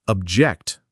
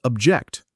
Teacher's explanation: A classic example is noun verb pairs like object, noun, stress on the first syllable versus object, verb, stress on the second syllable